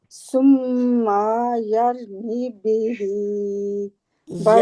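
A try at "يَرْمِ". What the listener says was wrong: यरमी यरमी, रा को मोटा, यरमी भी।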